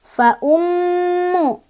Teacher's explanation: ini ada gunnah karena ada mim bertasydid. Cara bacanya adalah didengungkan dan dengungannya ditahan 2, 3 atau 4.